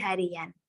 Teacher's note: pada dasar harian muncul bunyi Y yang dalam ortografi tidak dituliskan tetapi dalam ucapan di Tuliskan contoh hari plus and jadi harian